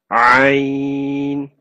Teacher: This comes from mid of the throat.